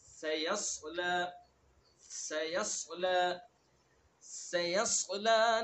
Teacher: ہمیں، سیص پہلے سین ہے، پھر یا اس کے بعد صاد، مخرج دونوں کا ایک ہے، سین اور صاد کا، صاد کو کیا کرنا ہے؟ پر کرنا